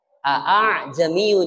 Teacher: meringankan bunyi Hamzah yang kedua itu namanya tashil contoh di surah kusilat Aa jamiyu jadi A jamiyu jadi bukan